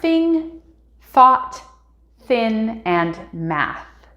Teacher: sound number 42 is the th sound that is unvoiced like of course we will only see this as a th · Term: unvoiced th sound